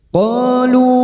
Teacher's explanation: qof fathah diikuti alif dua harakat kita panjangkan mad th'i. Lu bertemunya mad dengan hamzah di lain kalimat mad jaiz munfasil.